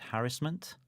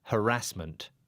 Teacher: harassment and I said harassment ah third again harassment harassment so I'm putting the stress on the first syllable and I'm putting it on the second